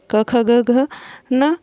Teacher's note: 10 वर्ग होते हैं। पहला है कंठ, गले से बोला जाने वाला, जिसमें हमारा क वर्ग आता है पूरा